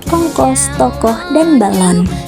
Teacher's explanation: proses pembentukannya adalah tengah bawah belakang bundar